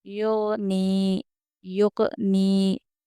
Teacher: دیکھیے غین حروف قلقلہ میں سے نہیں ہے، جزم والا حرف غین حروف قلقلہ میں سے نہیں ہے، اس لیے ہم اس کو ڈبل آواز کر کے نہیں پڑھیں گے بلکہ صرف ملاتے ہوئے آگے بڑھیں گے۔